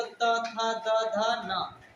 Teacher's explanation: ता वर्ग क्या है? दंत व्यंजन।